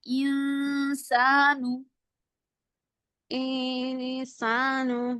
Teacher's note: زبان کو ہم جو ہے وہ نون کے مخرج پہ نہیں لگاتے بلکہ اس کو ہوا میں بس ایسے ہی چھوڑ دیں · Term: اخفا